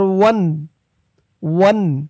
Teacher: স্পষ্ট করে গুন্নাহ ছাড়া বলতে হবে ওয়ান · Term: ইজহার